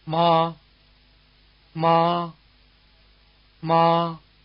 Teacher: its pitch is near the top of the speaker's range and its Contour is level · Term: high tone